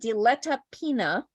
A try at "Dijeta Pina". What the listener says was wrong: That is Dijeta Pina, and I'm present. Dijeta. The double L sounds like a J. Dijeta Pina.